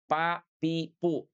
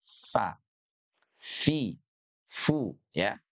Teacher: bibir bawahnya nih nempel ke gigi seri atas